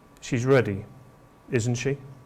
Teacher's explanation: We know the answer already, so we use a downward pitch. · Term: tag question